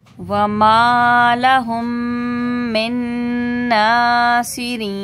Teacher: मीम साकिन के बाद मीम है तो इदगाम शफ़वी का गुन्ना होगा